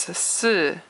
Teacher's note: There is no, usually it's an E noise, E sound in pinyin, but after a C and after an S it's just a grunting noise, and it is fourth tone